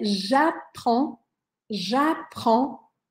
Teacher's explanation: boca Tá jaon ja tem que deixar a boca aberta jaon é tipo um som de ã mas com a boca um pouco mais aberta